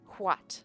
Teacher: We have the voiceless labial velar fricative.